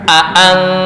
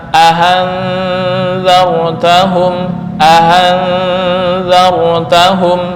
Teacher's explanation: itu Tasil bukan Hamzah dan bukan Alif